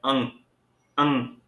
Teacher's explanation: अनुस्वार का उच्चारण स्थान नासिका होता है